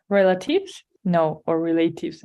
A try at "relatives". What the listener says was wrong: It's just that the stress was in a different part. But yes, if you have the stress in this A, it's correct. Or sorry, in this E at the beginning. Relatives, right? Relatives. It's correct.